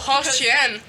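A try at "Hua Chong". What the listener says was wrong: Wachong. It's Wachong. Yeah, but in the Chinese it's pronounced Wachong. The H is pronounced W. Wachong.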